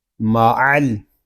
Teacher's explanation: عین حلق کے درمیان والے حصے سے ادا ہوگا، اور جب عین کو ادا کریں گے تو حلق ہمارا تھوڑا سا گھومے گا۔ عین کو ہم لام کے ساتھ ملا دیں گے، لام ساکن ہے، اس کو سکون کے ساتھ پڑھیں گے۔